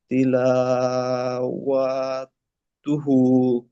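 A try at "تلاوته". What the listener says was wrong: ও টান হয়ে যাচ্ছে, তিলাওয়াতুহু।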